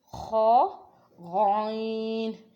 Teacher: غائن اور خا کی آواز موٹی ادا کرنی ہے، اور یہ رگڑ کی آواز نکلتی ہے